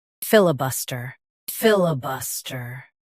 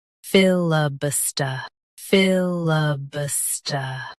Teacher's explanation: US ends with st-r. UK ends with st.